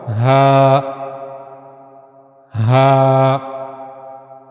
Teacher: जो हलक का सबसे निचले वाला हिस्सा है वहां से हा ये जो सीने की तरफ वाला हिस्सा है हलक का वहां से अदा होगा · ہا کو ادا کرنے کے لیے گلے کا سب سے نچلا حصہ استعمال ہوگا